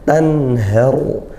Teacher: ada nun sukun bertemu ha, izhar halqi ya, dibaca jelas nun sukunnya. Tanharu, alirkan sedang saja, pertengahan saja ngalirnya.